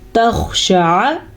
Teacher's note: شین کو لمبا نہیں کرنا، شین کے اوپر صرف اور صرف زبر ہے